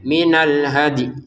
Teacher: yang di sini minal hadi kita pantulkan dalnya